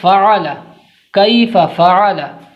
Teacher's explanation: فا کو اوپر کے دانتوں کا کنارہ نیچے کی ہونٹ کی تری سے مل کر فا ادا ہوتا ہے، عین بیچ حلق سے عین ادا ہوتا ہے، زبان کا کنارہ اوپر کے مسوڑھے سے مل کر لام ادا ہوتا ہے۔